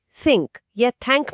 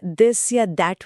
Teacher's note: इसे बोलने का विज्ञान यह है कि जीभ की नोक को ऊपर और नीचे के दांतों के बीच हल्का सा रखना होता है और फिर हवा को बाहर धकेलना होता है। यह मुंह के लिए थोड़ा अजीब होता है क्योंकि हिंदी बोलते समय हम जीभ को दांतों के बीच नहीं लाते। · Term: टी एच ध्वनि